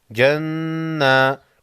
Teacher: نون مشدد پر غنہ ہوگا۔